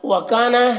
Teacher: وَكَانَ اس میں الف مدہ ہے، ایک الف کے برابر کھینچیں گا